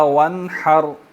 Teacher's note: نون ساکن پر اخفا نہیں ہوگا، اظہار ہوگا، ٹھیک ہے، کیونکہ ہا آ رہی ہے آگے